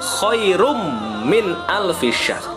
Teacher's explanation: Jadi langsung masuk ke mimnya. N-nya tidak lagi dibaca, melainkan langsung diganti menjadi huruf M ya. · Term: idgham bi gunnah